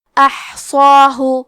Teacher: حرف الصاد ہے تو ہمیں مد الف کو بھی بھاری آواز میں ادا کرنا ہے